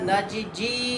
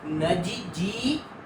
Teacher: जीजी शब्द आहे पहिला जी रस्व दुसरा जी दीर्घ